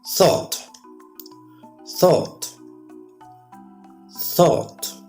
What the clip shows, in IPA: θɔːt